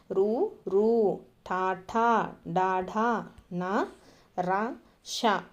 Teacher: నాలుకతో గట్టిగా అంగిలిని తాకుతూ పలికే అక్షరాలు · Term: మూర్ధన్యాలు